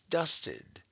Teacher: we hear okay it sounds like it's dusted with an eye we don't say the e the way we would say it in a word like egg we don't say dust head it's dusted so we're making the